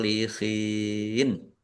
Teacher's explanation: shadnya ada tasdidnya shadnya dibaca dobel ditekan